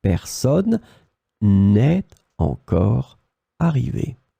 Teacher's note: Then you don't forget the ne. Of course, you drop the e because you've got a vowel after